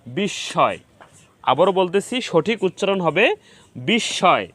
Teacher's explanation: উচ্চারণ দুইবার করতে হবে তো আমাদের রুলস অনুযায়ী এখানে শব্দের মাঝে দন্তস এর সাথে ম ফলা সংযুক্ত হয়েছে এজন্য দন্তস এর উচ্চারণ দুইবার হয়েছে